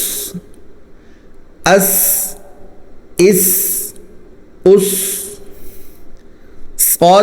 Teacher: सीन भी जा की तरह दांत मिलाकर निकालना है जबान बिल्कुल भी नहीं निकालनी और सीटी की आवाज आनी चाहिए · سین بھی زا کی طرح دانت ملا کر نکالنا ہے، زبان بالکل بھی نہیں نکالنی اور سیٹی کی آواز آنی چاہیے